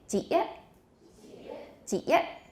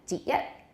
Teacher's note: There's a nice sharp glottal stop at the end.